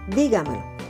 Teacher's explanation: Su sílaba tónica está en la di.